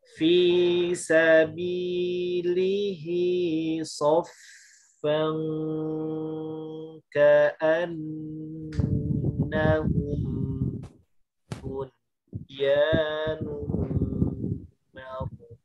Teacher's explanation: Ka'an kemudian nahum hukum mim sukun ya, mimnya tidak ada harokatnya, dia ikhfa syafawi.